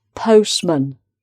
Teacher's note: when you have a longer word with the word man maybe at the end of it, which is not emphasized so much as the other syllable, that is going to turn into a schwa